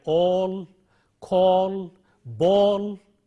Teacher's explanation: have in a word like ask father park and so on then we have a rounded vowel which is long o · Then we have a rounded vowel which is long, o, as we have in a word like all, call, ball, and so on.